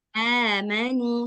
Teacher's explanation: A dengan nu sama-sama panjang.